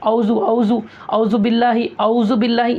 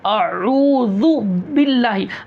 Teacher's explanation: हमज़ा की भी आवाज़ आना, डायरेक्ट आइन से शुरू नहीं कर देना।